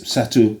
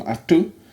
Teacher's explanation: satu loses its s to become attu